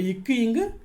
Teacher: நாவின் முதல் அன்னத்தின் அடை